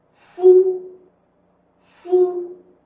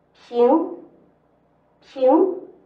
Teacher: 心是前鼻音的字，平是后鼻音的字